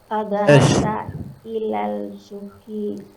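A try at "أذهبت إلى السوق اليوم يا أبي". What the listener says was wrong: Ila au ilas. Ilal au ilas. Ilas sahih. Sin huruf syamsiyah. Azhabta ila suqil yauma ya abi.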